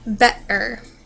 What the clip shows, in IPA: t or ʔ